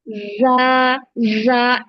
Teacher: एक तो आपको जा में बजिंग साउंड लाना है। जा, जा, जैसे मक्खी होती है ना, बी होती है, उसके पंखों की जो आवाज होती है, जा, उस तरह का साउंड लाना है।